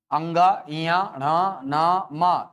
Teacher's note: ये ऐसे व्यंजन है सर जिनका उच्चारण करते समय वायु प्रक्षिप्त करना पड़ता है, किधर? नासिका की तरफ, नासिका की तरफ भेजना पड़ता है अपने को ये है, और नासिका की तरफ भेजना है तो सर एडजस्टमेंट करना पड़ेगा अपने को। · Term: नासिक्य व्यंजन